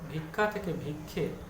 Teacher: আকারটা একার হয়ে গেছে পরবর্তী স্বরধ্বনিটি, কিন্তু পূর্ববর্তী স্বরধ্বনি রসই ঠিক আছে। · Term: প্রগত স্বরসঙ্গতি